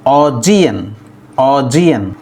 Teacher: The stress is on the second syllable G.